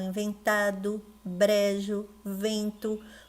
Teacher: o pode ter o som de u